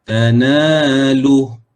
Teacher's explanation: Jadi bila kita berhenti, ha tu dimatikan.